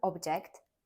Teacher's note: object stressed on the first syllable it means a thing that can be seen or touched